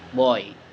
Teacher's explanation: b is voice bilabial and plosive, same with p, but with vocal cord vibration